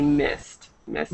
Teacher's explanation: you don't add an extra syllable here with the Ed